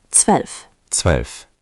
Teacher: Again, z equals ts, zwölf. Zwölf. Make the ts clear, zwölf.